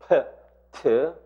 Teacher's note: 트 할 때 순간적으로 공기를 막았다가 터뜨립니다. 순간적인 폐쇄가 있습니다.